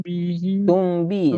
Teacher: dengung 2 harokat kasih celah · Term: Iqfa Safawi